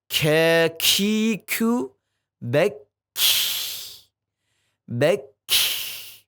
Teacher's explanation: Bedanya kalau kaf ada hamesnya. Dia masuk kepada sifat hames.